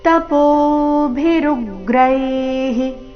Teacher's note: ವಿಸರ್ಗದ ಉಚ್ಚಾರಣೆಹಿ ಎಂದು ಬರಬೇಕು